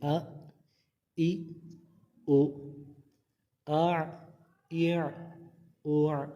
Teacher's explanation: حمزہ ساکنہ کو جھٹکا دے کے پڑھیں گے، تو اس کو جھٹکا دیں گے.